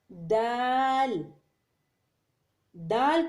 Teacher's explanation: خو، خو کو ادنی حلق سے ادا کرنا پڑتا ہے۔ دال، دال کو زبان کی نوک اور ثنایا علیہ کی جڑ سے لگا کر ادا کرنا پڑتا ہے